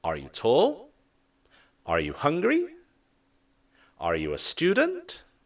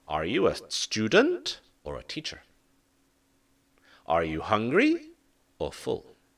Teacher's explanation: there is a choice or goes up and then down